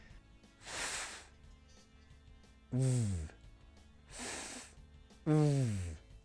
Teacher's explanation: But a voiced sound, like a V, that does produce a vibration in the throat. V. The same mouth shape, but the difference is a vibration.